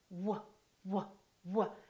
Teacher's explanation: you need to round your lips, W, W, and you need to have a lot of air coming through. So make sure that your vocal cords are vibrating and that there is air coming out of your lungs. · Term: W sound